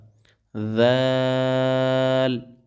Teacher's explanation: ذال کے ادا کرنے کا بھی طریقہ یہی ہے کہ زبان کو دونوں دانتوں کے درمیان رکھ کر ذال کو ادا کیا جائے گا